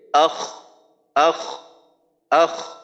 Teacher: একটু বাতাস বের করব আক কিন্তু খর ক্ষেত্রে আখ আখ আখ পুরাটাই আওয়াজ চাল এখানে আক বন্ধ করার কোন সুযোগ নেই